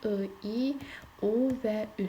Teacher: Qapalı saitlərimizin ikinci adı dar saitlərdir. Yəni ki, onların tələffüzündə ağız boşluğu gen saitlərə təzad olaraq daralır